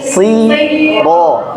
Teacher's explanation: Jadi kasrohnya dimeringiskan dulu. Siro. Nah, nah untuk fathah yang huruf-huruf tafkhim, ya, kan dia o, maka dia tetap terbuka.